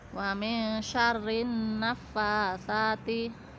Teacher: jadi langsung masuk ke huruf nun, lamnya tidak terbaca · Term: idgham syamsiah